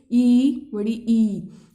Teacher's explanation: जीभ जो है आप ऊपर तालू के पास, यानी दांतों के थोड़ा पीछे, वहां तालू के पास जा रही होगी बोलते हुए, ई, बड़ी ई, तो वो हो जाते हैं तालव्य या तालु।